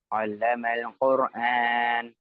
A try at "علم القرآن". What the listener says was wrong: குர்ஆன் அல்ல. ராக்கு குர்ஆன் என்று சொல்லி லம்மத்தும் வச்சு ஓதக்கூடாது. வந்திருக்கிறது சுக்கூன்.